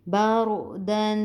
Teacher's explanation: یہ دال کے اوپر تنوین تھی، اس وجہ سے ہم نے غنہ کیا، ناک میں آواز کو لے کے گئے